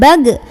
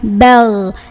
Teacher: Dorong sampai ke tenggorokan paling atas. Ketika sukun tidak ada pantulan, bukan bag, melainkan dialirkan suaranya bel. Tapi nggak boleh ada angin dan tidak kotor banget seperti kho, tidak.